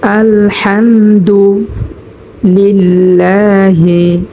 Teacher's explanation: আমরা হরফের শুরু থেকে উচ্চারণ করব হামজাটা। হাম, এখানে আমরা হরফের মধ্যখান থেকে হাটা উচ্চারণ করব স্পষ্টভাবে, এবং হাম এখানে কোনো গুণনা হবে না। মিম সাকিনের বামে বা মিম ছাড়া অন্য কোনো হরফ আসলে কোনো গুণনা হয় না, সেজন্য হাম এখানে আমরা কোনো গুণনা করব না।